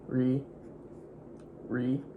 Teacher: You kept your tongue down and back in your mouth.